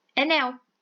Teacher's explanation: é uma palavra oxítona porque a sílaba mais forte é a última